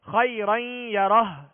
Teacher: ادغام کریں گے اور ایک الف کی مقدار میں غنہ کریں گے. الٹا پیش ہے، اس کو ساکن کریں گے، ہا کو ساکن کر کے پڑھیں گے، یعنی خیرن یرہ کہہ کر وقف نہیں کریں گے بلکہ خیرن یرہ یوں پڑھ کے وقف کریں گے.